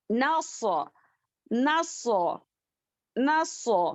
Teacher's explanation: نون باریک پڑھیں گے صاد موٹا پڑھیں گے